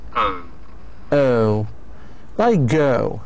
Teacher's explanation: It begins with ER, Schwa, and moves towards the O.